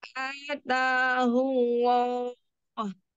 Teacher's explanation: Allah, pangkal lidahnya naik.